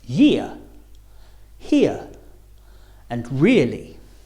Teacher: your mouth should open a little bit starting on the I and finishing on the uh ear as in the words year, here, and really. · The main physical difference between the sounds on the top row and the sounds on the second row is that your mouth should be a little more open for the second row sounds. So as you say ear, your mouth should open a little bit, starting on the I and finishing on the ear. As in the words year, here, and really.